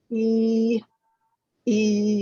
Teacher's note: There's more tension in your mouth position when saying the long E sound.